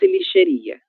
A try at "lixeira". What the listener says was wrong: A letra I ela está em outra posição.